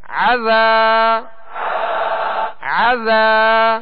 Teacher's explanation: عین کو درمیانے حلق سے ادا کرنا ہے تاکہ حمزہ کی آواز اس میں پیدا نہ ہو